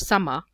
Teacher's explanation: summer is again made up of two syllables some and some is stressed and ER the portion of ER is not stressed